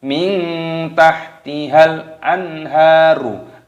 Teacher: nun sukun bertemu dengan ha, hukumnya dibaca idhar halqi, dibaca jelas. Anharu, jangan anharu, ya tidak boleh.